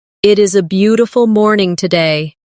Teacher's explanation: Feel the flow from beautiful to morning. There's a tiny connection there, where the sound moves smoothly without a pause.